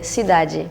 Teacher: So at the end for us is like it becomes like a closed E.